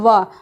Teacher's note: व एक ऐसा वर्ण है जिसे दांत और होंठ दोनों की सहायता से हम बोलते हैं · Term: दंतोष्ठ